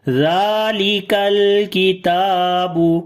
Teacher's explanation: لام کے اوپر صفت توسط ہوگی، آواز کو ہلکا سا جاری کر کے پڑھیں گے